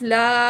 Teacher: मीम 2 ज़बर लाम मल, लाम ज़बर अलिफ ला, अलिफ मद है, अलिफ से पहले ज़बर है, अलिफ मद है, 1 पॉइंट खींच के पढ़ेंगे